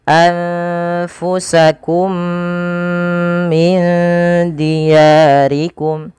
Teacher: Mim yang kedua dikasih harakat tasdid dan diwarnai dengan warna hijau yang artinya huruf mim yang pertama dimasukkan kepada huruf mim yang kedua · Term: idgham mimi